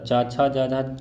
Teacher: च, छ, ज, झ कहाँ से निकलता है? तालु से निकलता है।